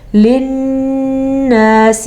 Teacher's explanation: نون کے اوپر آپ کو جو شد نظر آ رہی ہے، اس شد کی ادائیگی غننے کی صورت میں ہوگی. یہ نون اور میم کے ساتھ ہوتا ہے. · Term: غنہ